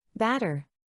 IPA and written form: ˈbæt̬.ɚ (Batter)